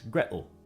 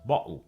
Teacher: the T in water, as well as the T in Gretel, is generally pronounced as a glottal stop in Cockney English. So while in some British accents it would be water, in Cockney it's water, and rather than Gretel, it's Gretel.